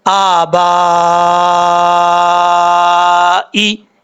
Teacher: حمزہ کے اوپر کھڑا زبر ایک الف کی مقدار لمبا کریں گے، با کے آگے الف ہے، الف کے اوپر مد ہے، یہاں پر ہم نے 3 الف کے برابر اس کو لمبا کر کے پڑھنا ہے کیونکہ یہ مد متصل ہے.